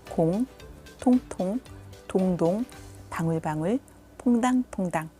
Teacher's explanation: 혀의 움직임은 같지만 이응은 비음입니다. 비음으로 부드럽게 울리는 이응은 기역과 전혀 다른 느낌을 줍니다.